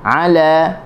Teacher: Ala huruf ain, halqum tengah.